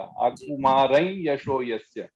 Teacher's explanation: वैसे यकार आ गया तो उसमें अनुनासिक यकार उच्चारण होगा।